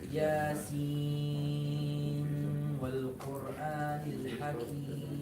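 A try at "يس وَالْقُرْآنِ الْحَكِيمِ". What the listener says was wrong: You're very close, but you're saying Sin. You started the Ghunna from the Sin. Start the Ghunna from the Waw.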